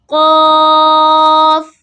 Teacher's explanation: Qaf comes from the back of the tongue and throat to pronounce Qaf.